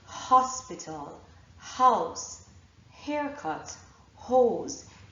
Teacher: you will actually feel the puff of air on your hand.